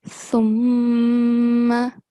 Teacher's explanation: Lastly, in this letter, which I've highlighted here, you prolong the mim mushaddad. So make sure you don't prolong it more than 2 seconds. And secondly, make sure that you make nasal sound.